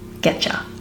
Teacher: Get you will often shorten to getcha, with the main change being the U into a ya, and then as we merge those two words, we get a ch sound in the middle